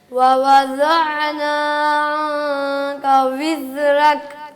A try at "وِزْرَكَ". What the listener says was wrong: را موٹا کریں، را پر کریں.